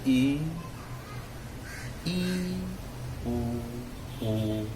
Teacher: संवृत में मुंह लगभग बंद रहता है